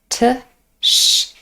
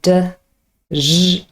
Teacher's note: Now, when you have a look at the phonemic transcript, you can see that ch and j consists both of two individual sounds. We have a plosive first, t or d, and the second sound is a fricative, sh or zh. So the first sound is a plosive. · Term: affricate